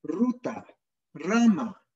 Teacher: El aire ingresa y realiza una pequeña vibración de la punta de la lengua al pasar. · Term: Vibrante